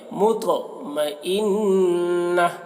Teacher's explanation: تو کو پر پڑھیں گے اور تو میں قلقلہ بھی کریں گے